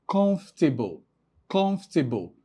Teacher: So the emphasis is on the first syllable